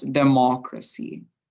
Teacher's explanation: the main focus of the word or the main stress of the word goes within the second syllable